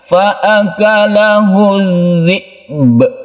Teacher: Karena dia itu waqaf, maka ba ini yang semula dia itu dhammah menjadi sukun atau kita matikan. Karena ba itu huruf qalqalah, maka ini kita pantulkan. Tentunya memantulkan ba ini adalah setelah kita itu menyempurnakan sukun hamzah.